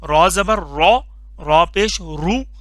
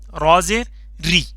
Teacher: رو کے اوپر زبر یا پیش ہو تب یہ لفظ موٹا ہو کر کے پڑھتے ہیں، پر کر کے پڑھتے ہیں رو.